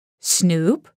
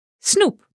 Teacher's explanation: in Dutch we go straight to ooh